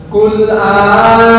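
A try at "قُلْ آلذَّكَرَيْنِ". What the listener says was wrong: Bukan adzakarain. Tasdidnya mana? Tasdid nggak dibaca sama dengan membuang huruf. Qul adzakaraini, adzakaraini.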